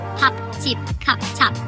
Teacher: the final P is soft and doesn't explode like in English